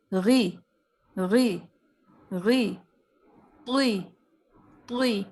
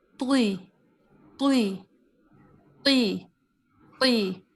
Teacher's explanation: زبان کی جڑ کو تالو کی طرف بلند ہونے کرتے ہوئے ان حروف کو آپ موٹائی کے ساتھ ادا کریں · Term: استعلا